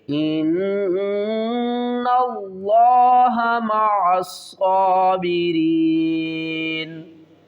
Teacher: نون مشدد ہے، گنہ کریں گے